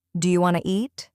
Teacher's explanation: The sounds blend. Sometimes letters are dropped like the t in want to and sometimes new sounds appear between words like an L sound or a soft ch.